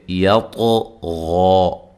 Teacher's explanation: طا کو موٹا ادا کرنا ہے، غین کو موٹا ادا کرنا ہے، اور غین کو وقف کی صورت میں ایک الف کی مقدار کے برابر ہی لمبا کریں گے، ٹھیک ہے۔